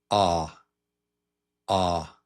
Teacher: It's in the back of the mouth, the back of the mouth toward the throat. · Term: short vowel sound